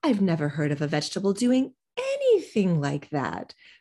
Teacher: we could emphasize the word anything